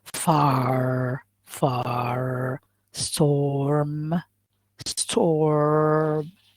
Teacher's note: the retroflex that characterizes the american accent